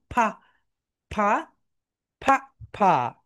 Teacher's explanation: উপরের যে দাঁত রয়েছে উপরের দাঁত নিচের ঠোটের সঙ্গে টাচ করবে। নিচের ঠোটের সঙ্গে টাচ করবে।